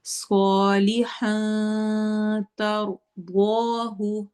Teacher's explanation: تر میں روا کو موٹا پڑھنا ہے، ضاد کو بھی موٹا پڑھنا ہے · کو ہم نے چھپا دینا ہے، ہم پڑھیں گے صالحا ترضاہ، صالحا کر کے نون کی آواز کو چھپائیں گے ، تر میں روا کو موٹا پڑھنا ہے، ضاد کو بھی